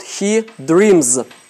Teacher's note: Поскольку m – звонкое, мы окончание озвончаем.